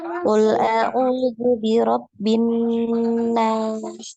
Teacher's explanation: Coba dipanjangkan lagi nunnya.